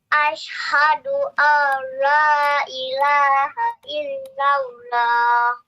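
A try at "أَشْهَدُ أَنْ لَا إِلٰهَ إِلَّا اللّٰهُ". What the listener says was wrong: Untuk hanya masih masuk ke huruf ha ya, sedikit. Ha hi hu. Ada sendiri ha hi hu. Ha hi hu. Ha hi hu. Ha hi hu.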